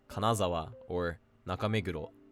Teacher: the drop being before the second to last mora as in Kanazawa or Nakameguro